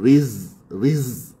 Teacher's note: Riz adakan safir pada huruf zai. Zai mati.